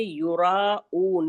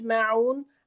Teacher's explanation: हमजा की आवाज हलक के ऊपर वाले हिस्से से निकालेंगे